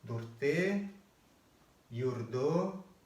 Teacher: гласные в середине бурятских слов между двумя согласными, ну, когда она краткая, то есть одинарная, да, она как бы затирается двумя этими согласными и практически не произносится. от нее остается небольшой отзвук, но на начальном этапе лучше ориентироваться на то, что она проглатывается совсем.